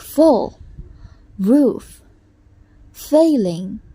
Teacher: the lower lip likely touch the upper teeth and the air is pushed through the narrow opening creating friction and without vibration of the vocal cords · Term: voiceless